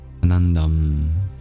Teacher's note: Ananda ends in a nasalization, anuswara, rather than an expulsion of breath, visarga